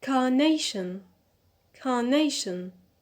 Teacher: so here the stress is on nay because we have the suffix ion so the stress is on the penal the second from the